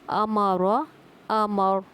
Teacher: رو کو ہم پر کر رہے ہیں کیونکہ جب رو ساکن آ رہی ہے تو اس کے پہلے پہ زبر ہے تو رو جو ہے وہ پر کی جائے گی۔